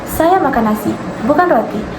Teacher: Terdapat tekanan rendah pada kalimat saya makan nasi. Menegaskan bahwa yang dimakannya adalah nasi, bukan roti atau lain sebagainya. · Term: tekanan rendah atau sekunder